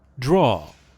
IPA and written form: drɑː (draw)